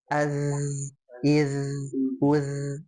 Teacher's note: ketika dia disukunkan ada sifat yang menonjol yaitu sifat suara itu mengalir rakhwah · huruf zal itu ujung lidah ya ketemu dengan gigi seri atas